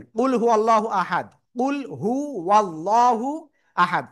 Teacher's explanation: আল্লাহ শব্দ লামের ডাইনে জবর রয়েছে। মোটা আওয়াজে পড়তে হবে।